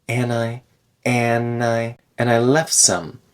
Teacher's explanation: that D in and disappears a lot of the time.